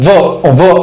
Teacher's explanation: म्हणजे दातांचा देखील संपर्क येतो आणि ओठांचा देखील संपर्क येत आहे. त्यामुळे या वर्णाला किंवा या व्यंजनाला आपण दंत्योष्ठ व्यंजन किंवा दंत्योष्ठ वर्ण असे म्हणतो.